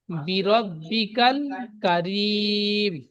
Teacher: বি বলে টান দিচ্ছেন, বা নিচে জের আছে টান হবে না